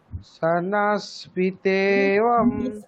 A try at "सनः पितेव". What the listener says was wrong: নয়, সনফ, পরে পকার থাকলে ওটা ফ উচ্চারণ হবে, সনফ।